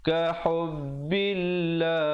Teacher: lafzul jalalah sebelumnya datang baris bawah dibaca dengan nipis, dan bila kita memilih untuk waqaf pada perkataan Allah, pastikan kita waqaf dengan sekurang-kurangnya 2, 4 atau 6 harakat.